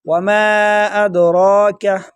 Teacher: میم کے ساتھ جو الف ہے ایک الف کے برابر کھینچیں گے